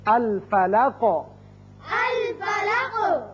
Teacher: الفلقی قاف حروف مستعلیہ میں سے ہے اور حروف قلقلہ میں سے بھی ہے، جب اس پر وقف کریں گے قاف ساکن ہوگا تو اس کی صفت قلقلہ ادا ہوگی